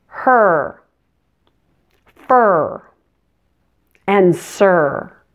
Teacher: your tongue needs to float in the middle of your mouth not touching anything and also you'll find your muscles are tense and your lips are rounded and pursed as if you were going to kiss someone like this Oh